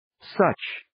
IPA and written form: sətʃ (Such)